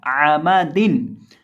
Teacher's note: जुबान की नोक सामने वाले ऊपर के 2 दांतों की जड़ से जब लगे तो दाल अदा होता है · दोनों होंठों को मिलाने से मीम अदा होता है